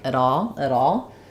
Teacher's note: What happens here is we link, the T becomes a flap. The first A of at, rather than being a full sound, might get a little bit reduced, so it sounds a little bit more like at all.